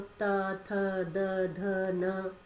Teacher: एक होता है दंत्य, जिनमें दांतों को स्पर्श करते हुए निकलते हैं